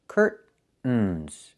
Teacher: I can use a stop T and say curt. Stop the air. Put the tongue up. Curtains. And go directly to the N.